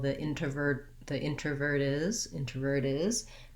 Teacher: If my next word starts with a vowel, for example, the introvert is, then I do say that T in the form of a flap. Sounds more like a D.